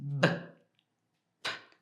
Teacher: you can have two letters or you're doing the same thing with your mouth one has a voice and one doesn't have the voice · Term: Voice versus no voice